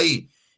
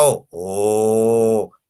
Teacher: cuando pronuncio la I, mi lengua se va hacia adelante. Y cuando pronuncio la O, mi lengua se va hacia atrás. Correcto. La I es una vocal anterior y la O es una vocal posterior.